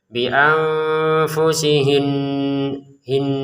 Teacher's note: Kita berhenti di sini maka nun bertasdidnya tetap dibaca dengungannya ya. Bianfusihin hin gitu ada dengungannya di rongga hidung kita. Walaupun kita berhenti di sini ya.